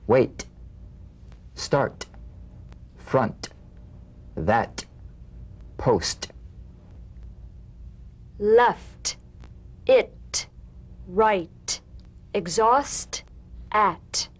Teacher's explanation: The same staccato springing action as the D drum beat, with no voice, forms the light tap of the T. Feel a gentle pulsation in the tongue. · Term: unvoiced T